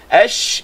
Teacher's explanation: Huruf rakhawah ni huruf yang mana bila kita sebut bunyi suara berjalan, mengalir.